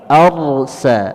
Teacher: Sin berada di ujung lidah bertemu dengan halaman gigi seri bawah · huruf ra sukun sebelumnya berharokat fathah, dibaca tebal